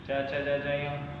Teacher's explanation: चु यानी च वर्ग, च च ज ज य, या और स, इनका उच्चारण स्थान तालु होता है।